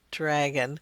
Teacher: a DR blend being perceived to be an affricate